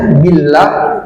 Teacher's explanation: Ada tanda ba kecil ya di ba, di ini mim kecil di ba ini, di atas ba ini tandanya tidak dibaca min tapi mim ya, diganti nun sukunnya menjadi mim sukun, mim bil yu'min billah, billah lamnya lafaz jalalah ini tipis ya, billah, jangan billah ya, billah itu keliru, harus tipis, billahi wa rasulihi.